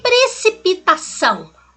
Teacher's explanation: O A é a vogal, o O tem som de U, semivogal, ditongo.